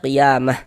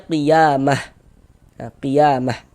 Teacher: kalau misalnya kita berwaqaf, kita berhenti tepat di huruf ta marbuthah, maka dia menjadi huruf H. Ini kita baca, berhenti kita di huruf ta marbuthah, maka kita baca qiyamah. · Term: ta marbutah